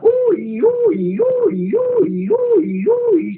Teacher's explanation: Cada vez que nosotros vamos a hacer un ejercicio de tenemos que hacer un ejercicio llamado filtrando, que es subir y bajar el tono, pero utilizando la U y la I, tipo como una ambulancia